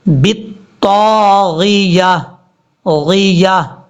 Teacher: اگر آپ بالطاغیہ پڑھیں گے تو غائن کے بعد جو یا ہے یہ یا چھوٹ رہی ہے، یا کو نہیں چھوڑنا. بالطاغیہ غیہ اس طریقے سے پڑھنا ہے، یا کو کلیئر کر کے پڑھنا ہے.